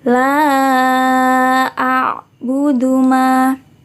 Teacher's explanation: La di sini dibaca panjang 4 sampai 5 harokat. A'budu ma. Ma di sini dihukumi bacaan mad tabi'i atau mad asli.